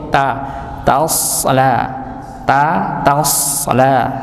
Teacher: hamiah taslaaran hamiaharan hamiah ya tasala ya di sini sekali lagi kita menemukan huruf sh dengan sukun maka bukan dibaca tasla tapi tasla taasla tasla jangan sampai t-nya ikut tebal